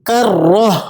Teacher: گول تا کی آواز ہا میں تبدیل ہو جاتی ہے